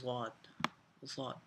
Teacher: اور اس کے علاوہ ہمارے پاس جو ضاد کا مخرج ہے اس کو تھوڑا سا سمجھنا آپ کو پڑے گا، کیونکہ تھوڑا سا کافی ٹف ہوتا ہے، اس کو مطلب تھوڑا سا یہ ہے کہ اس کو سمجھ کے پڑھنا پڑتا ہے۔ زبان کی کروٹ سے ادا ہوتا ہے ضاد